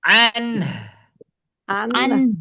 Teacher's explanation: Nunnya masukin hidung, h-nya keluarin dari mulut.